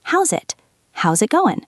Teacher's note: It is not how is it going, it is how's it going. That Z sound is the key. The S in how's links to the I in it.